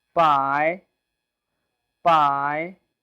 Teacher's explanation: Pi with the second tone, rising tone.